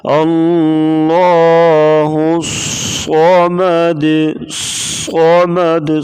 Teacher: صاد کو پڑھتے وقت سیٹی کی آواز پیدا ہوگی، سختی سے پڑھا جاتا ہے صاد کو۔